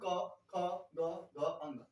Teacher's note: इस वर्ग का जो पहला है क, तीसरा है ग और पांचवा है अंग, ये होते हैं अल्प प्राण। तथा दूसरा ख, घ जो कि महाप्राण होते हैं।